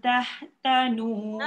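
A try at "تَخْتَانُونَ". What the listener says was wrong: Takhtanu. Satu kho bukan tah. Takh. Takh. Tebal. Kho tebal. Takh. Ah, lepas tu tanu tu jangan tanu. Tak ada alif. Tanu.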